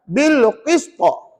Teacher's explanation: Baca laju ataupun baca cepat, tak ada hukum mat. Dan ada lantunan yang kuat di situ, namanya qalqalah kubra.